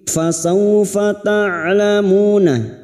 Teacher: Fasaw fathah bertemu sukun kita lunakkan huruf lin. Fasawfa ta'lamuna, huruf ain ta'lamuna, mu cuma diikuti wawu sukun 2 harakat mat tabi'i.